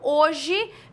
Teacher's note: Diferentemente nós temos visualmente quatro letras uma duas três quatro mas na hora de pronunciar eu falo hoje veja que o h não tem som